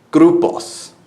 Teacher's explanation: R's are going to be rolled, like a clipped R, so it's grupos, for example.